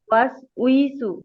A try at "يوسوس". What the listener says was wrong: উই টান হবে না আপু ঝটপট হবে ইউওয়াসওয়িসু ইউওয়াসওয়িসু ইউওয়াসওয়িসু ইউওয়াসওয়িসু ইউওয়াসওয়িসু